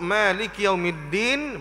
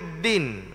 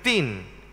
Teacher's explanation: makhrajnya pada hujung lidah di Pangkal gigi kapak pangkal tu akar gigi D lah yang di atas gi kapak